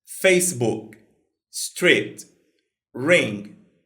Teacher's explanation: No inglês, a gente praticamente não fala a última consoante. A gente só faz o gesto com a boca.